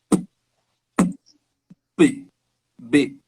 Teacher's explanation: Posso ter o som de P e o som de B, né? Os dois são feitos com fechando os lábios e dando uma pequena explosão.